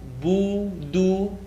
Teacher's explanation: The oo is going to make us pucker our lips.